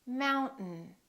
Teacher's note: in the vowel disappears so we say Mountain don't say Mountain don't release your tongue keep it up and just go directly to the N